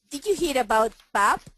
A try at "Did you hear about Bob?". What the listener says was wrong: You're saying Hira. Don't say that. Hira.